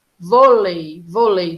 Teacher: quando nós temos na mesma sílaba uma vogal e uma semivogal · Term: ditongo